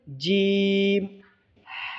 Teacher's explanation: जीम का मखरज, ज़ुबान की बीच के हिस्से को ऊपर के तालु पर लगाने से जीम अदा होते हैं।